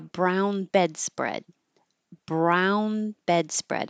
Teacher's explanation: you won't release the D sound in bed or in spread